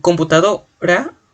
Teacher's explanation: la mayor fuerza de voz está en do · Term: acento